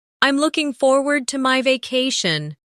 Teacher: Notice the smooth connection between looking and forward.